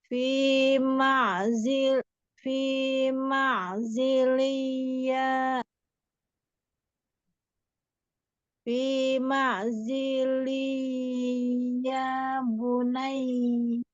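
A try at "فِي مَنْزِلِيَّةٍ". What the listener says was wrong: Oke, tapi kurang dengung sedikit lagi ditanwin ketemu ya. Coba masukkan ke hidung.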